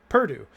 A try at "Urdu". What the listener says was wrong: no P. Urdu.